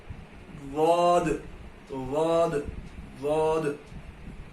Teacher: ضاد جب ہم ادا کریں گے تو ہماری زبان کی نوک سامنے کے دانتوں کو اوپر کے حصے پر آ کے ٹچ ہوگی. ہماری زبان کی نوک دانتوں کے اوپری حصے کو آ کے ٹچ ہوگی.